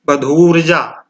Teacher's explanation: इसमें दीर्घ उ और दीर्घ उ मिलकर के दीर्घ उ हो रहा है। बधु धन ऊर्जा।